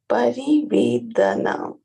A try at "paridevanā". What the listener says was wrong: It is paridevanā and not parivedana.